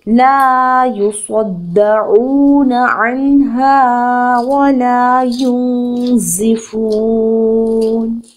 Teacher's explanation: نون ساکن کے بعد حرف ہے زا، نون کی آواز کو ناک میں چھپا لینا ہے · فا پیش واو فو، وقف کی صورت میں 6 حرکت تک اس کو طول دے سکتے ہیں